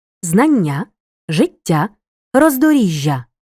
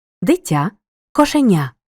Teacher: розгляньмо детальніше випадки коли м'які чи пом'якшені шиплячі приголосні між двома голосними подовжуються в іменниках середнього роду